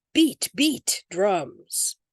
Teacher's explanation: Spondee, that's two stresses in a row.